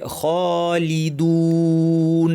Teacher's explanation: আওয়াজ খলি যেন ভারী না হয় লামটা যেন স্পষ্ট হয় দু লি বলার সময় ঠোঁটটাকে ভাঙতে হবে জের দু বলার সময় আবার ঠোঁটটাকে গোল করে ফেলতে হবে এখানে যদি ঠোঁটটা অলস থাকে তাহলে স্পষ্ট শোনা যাবে না শোনা